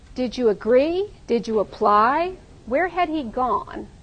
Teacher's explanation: they all have this stress pattern doo doo doo boo